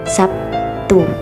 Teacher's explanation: Contohnya yaitu pada kata Sabtu dalam bahasa Indonesia lazim diucapkan menjadi Sabtu, di mana terlihat bunyi B menjadi P akibat pengaruh dari bunyi T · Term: asimilasi